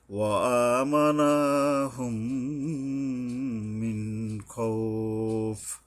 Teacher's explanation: এই খৌফ, এখানে 2 আলিফ পরিমাণ টাইনা পরে থামতে হবে